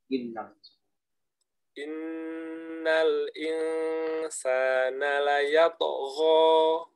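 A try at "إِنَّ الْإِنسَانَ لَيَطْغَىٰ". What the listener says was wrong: Antum ada campuran tuh. Gho-nya jangan ada campuran kho. Layat tuh gho. Jadi gho-nya keluar memang, cuman bercampur dengan bunyi kho. Layat tuh gho. Tapi gho. Kalau kho di bawahnya, kalau gho di atas.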